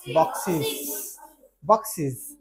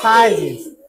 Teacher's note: এই শীষযুক্ত সাউন্ডের শেষে যদি এস বা ইএস যোগ করি তাহলে ওই এস বা ইএস এর উচ্চারণ হবে ইজ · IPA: /iz/